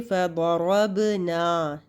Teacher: ना अलिफ मद्दा, दो हरकत लंबा करेंगे।